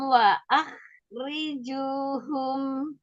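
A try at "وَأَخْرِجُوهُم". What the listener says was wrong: Waah, jangan waah, jangan dibuka. Kho itu adalah salah satu dari huruf yang istilah. Jadi waah, jadi tebel. Waah rijuhum. Ya, dari pangkal lidah tetap naik.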